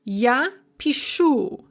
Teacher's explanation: And then the one that really gets people is this shifting stress, where the stress is on the ending in the ya form, and then it shifts one syllable towards the beginning in the other forms.